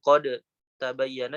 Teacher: Misalkan qad tabayyana dibaca qad tabayyana, dalnya melebur ke ta. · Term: idgham kamil